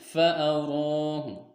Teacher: Huruf ro berharokatnya fathah, bertemu alif, dan setelah tidak juga bertemu dengan hamzah, waqaf, sukun, dan tasdid. Maka cara membacanya yaitu ro dipanjangkan 2 harokat. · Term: mad tabi'i